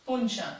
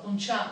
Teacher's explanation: No és el mateix la paraula punxa que la paraula punxar. La posició de la síl·laba tònica, punxa, la primera síl·laba, punxar, la segona síl·laba, diferencia significats.